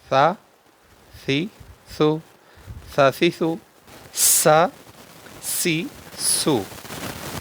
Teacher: सी स जाल का और सा का एक ही मखर है जबान की नोक और ऊपर के दांतों के अंदरूनी किनारे से यह दोनों हरूफ अदा होते हैं और इसको भी बगैर सीटी के पढ़ना है सा सी सु स सीस सा सी सु हरूफ सफीर में